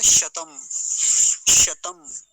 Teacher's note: बस इसमें तालव्य सकार का ध्यान रखेंगे